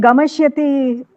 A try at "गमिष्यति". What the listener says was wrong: ஆமா, ஒரு அந்த கமிஷ்யதி ஹீனி என் காதுல விழுந்தது. அதுல விசர்க்கம் இருக்க மாதிரி விழுந்தது. கமிஷ்யதி.